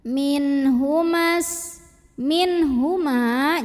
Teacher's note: halqi karena ada nun sukun yang ketemu dengan huruf H maka nun sukun dibunyikan jelas bunyi n tidak ditahan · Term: izhar halqi